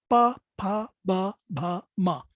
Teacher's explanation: which are bilabial, two lips, so bilabial, which are all pronounced by closure of your two lips